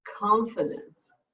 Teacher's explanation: confidence with a k k has a little air